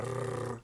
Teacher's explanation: the way to get it right, is to roll your tongue so you get a rrrr sound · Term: ra